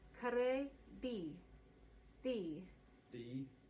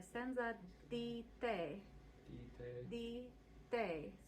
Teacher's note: For the Italian T's and D's, we're going to bring the tip of the tongue forward onto the teeth, which is the dentalizing part. Like this. So it's almost like saying the in English, but not quite.